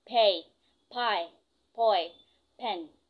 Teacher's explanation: Let's start the bilabial stops. For the voiceless bilabial stop, which is the letter P.